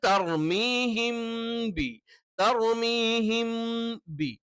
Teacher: ഒരേ ഉച്ചാരണ സ്ഥാനം അഥവാ ഉച്ചാരണത്തിലുള്ള വ്യത്യാസങ്ങൾ ഉണ്ട് അതല്ല ഉച്ചാരണത്തിന്റെ സ്ഥലം ഒന്നാണ് മൂന്ന് അക്ഷരങ്ങളും ചുണ്ടിൽ നിന്ന് തന്നെയാണ് എന്ത് ചെയ്യുന്നത് നമ്മൾ ഉച്ചരിക്കുന്നത് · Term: മീം പ്ലസ് ബ